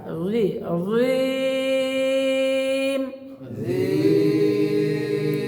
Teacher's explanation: রি মোটা হবে, নরম হবে, জিব্বার আগা দাঁতের আগা রি রিম। এইবার দেখেন আকে চাপ দিয়ে ছেড়ে দিতে হবে রিম।